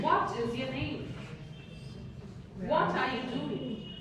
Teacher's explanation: if it's a WH question, it's a falling tone.